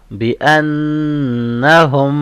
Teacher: نون کے پاس تشدید ہے اس لیے غنہ ہوگا، اور لاسٹ لیٹر کے پاس سکون ہے اس لیے اسٹاپ ساؤنڈ سیم ہوگا، بی انہم۔